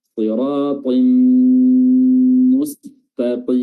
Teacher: idgham memasukkan tanwinnya dimasukkan ke mim disertai dengan gunnah yang ditandai dengan tasydid pada huruf mim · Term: idgham bi gunnah